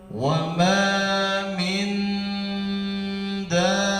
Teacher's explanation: Di sini dengung, bapak-bapak ya, nun mati ketemu dal. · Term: Ikhfa hakiki